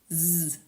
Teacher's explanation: finishes with a z sound, z, which is voiced.